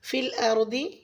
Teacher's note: रॉ को पूरी पढ़ेंगे क्योंकि रॉ साकिन है